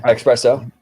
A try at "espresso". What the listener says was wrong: There's no X in there.